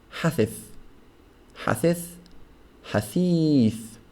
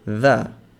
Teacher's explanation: It's not a the sound, it's a th sound because there's no buzzing sound. The difference between a the and a tha is the buzz sound.